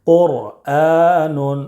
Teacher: قاف را پیش قر، حمزہ کھڑا زبر آ، قر آ، نون دو پیش نون، قرآن۔ را ساکن سے پہلے پیش ہے اس لیے را کو پر پڑھیں گے، قرآن۔ تو ناظرین، پر یعنی موٹا پڑھنا ہے، قرآن۔